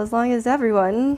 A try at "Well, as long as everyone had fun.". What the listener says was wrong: Don't slur your words. give it the beat.